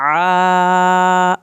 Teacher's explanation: आपने मद को पूरा खींचना है, आइन को आपने हल्क से पढ़ना है